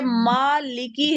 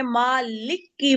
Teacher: हम्म, जैसे मालिकी है, इसमें काफ पे कोई तशदीद नहीं है, लेकिन आप इसको मालिकी पढ़ने की बजाय मालिक की पढ़ दो, मालिक की, लिक की कर हम्म, दो तो गलत है। काफ पे आपने तशदीद लगा दी, वर्ड मुखफ्फफ था, आपने उसको मुशद्दद बना दिया।